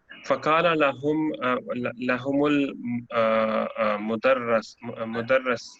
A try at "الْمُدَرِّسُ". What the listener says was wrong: مدرس. ہاں تجدید کے نیچے تو زیر ہے.